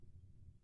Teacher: Alhamdu, ini harus ha tipis, jangan ha tebal.